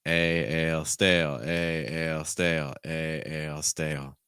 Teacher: as I get to the dark L sound, another thing I do, because it's not the stressed part of my word, I generally go down in pitch